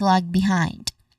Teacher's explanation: Stress is on the second syllable of behind which is hind.